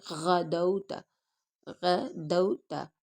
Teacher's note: غین کو موٹا کریں گے، اور یہ حروف حلقی میں سے بھی